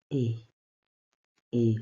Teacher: And the A sound in French is explained in the sense that it is a closed vowel pronounced with the mouth almost closed.